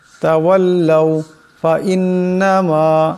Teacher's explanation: এখানে নুন মুশাদ্দাদের একারে পরিমাণ গুন্না হবে